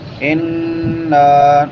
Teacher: نون مشدد پہ غنہ ہوتا ہے. آواز کو ایک ناک میں چھپا کر ادا کرتے ہیں، ایک الف کی مقدار کے برابر لمبا بھی کرتے ہیں.